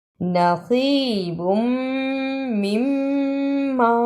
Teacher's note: صاد کے نیچے زیر، اسے یا سے بھی ملانا ہے اور صاد کو موٹا پڑھنا ہے۔